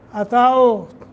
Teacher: واو کو موٹا، لقد قاف کو موٹا، دال پہ قلقلہ، اتاؤ واو ساکن ما قبل فتح ہے نرمی کے ساتھ، حروف لین